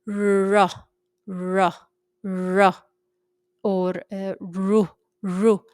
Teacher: You can feel that the base of the tongue is going against the soft palate and you can feel a blockage in the back end of your throat. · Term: heavy way